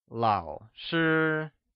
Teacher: 老 is pronounced with a falling, rising tone, while shi is pronounced with a high level tone.